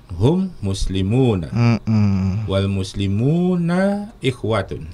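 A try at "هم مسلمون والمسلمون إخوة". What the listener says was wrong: Betul ya.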